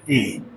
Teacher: तो ए का जो उच्चारण स्थान होगा इसमें दोनों स्थान आएगा। कंठ भी आएगा और तालु भी आएगा। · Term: कंठ तालव्य